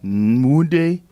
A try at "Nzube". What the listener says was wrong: It's an N, but the pronunciation's a little bit different. No, it's an N.